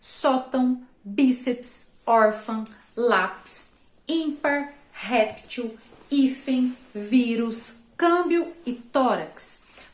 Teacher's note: Essas palavras são chamadas de paroxítonas, sim, porque a sílaba tônica está na penúltima sílaba daquela frase. Pois a sílaba mais forte é a penúltima.